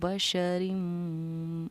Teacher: کیونکہ میم پر تشدید ہے تو بشرم پر ہم نے غنہ کیا